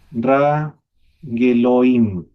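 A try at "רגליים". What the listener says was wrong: Claro, ahí, pero el Shebai no se pronuncia. Raglaim. Raglaim.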